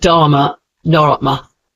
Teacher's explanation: It creates a quick R sound before the consonant. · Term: ref